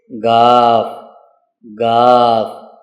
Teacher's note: غاف کی جو آواز ہے یہ زبان کی جڑ سے نکلتی ہے، یعنی جڑ سے، زبان کے بالکل آخری کنارے سے نکلتی ہے